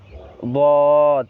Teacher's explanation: তারপর হচ্ছে 7 নাম্বার মাখরাজ জিহ্বার গোড়ার কিনারা উপরে মাড়ির সাথে লাগিয়ে, জিহ্বার গোড়ার কিনারা উপরের দাঁতের মাড়ির সাথে লাগিয়ে, সেখান থেকে একটি হরফ উচ্চারণ হয় বদ